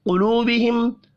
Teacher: قلوبہم قاف پر پڑھا جائے گا، واو مدہ 1 الف کے برابر کھینچ کر پڑھیں گے. میم ساکن کے بعد واو ہے، اظہار شفی ہوگا، یہاں پر بھی غنہ نہیں ہوگا.